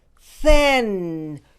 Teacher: There is no sound in your throat.